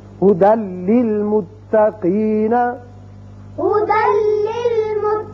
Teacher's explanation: یعنی دال کی ایک زبر لام سے ملے گی اور بغیر غننے کے پڑھا جائے گا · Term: ادغام بغیر غنہ